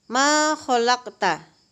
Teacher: Qaf mati tapi tetap dipantulkan bunyinya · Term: qalqalah sugra